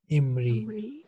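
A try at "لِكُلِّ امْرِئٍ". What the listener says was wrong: Likullimri, in, for each man. Join lam with meem. Alif is silent here when we read it in a sentence. Likullim riin.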